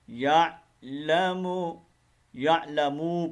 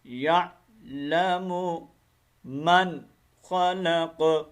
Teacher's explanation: یعلمو کی میم کو لمبا نہیں کرنا, یعلم یعلمو پڑھتے ہیں, یہ غلط ہے.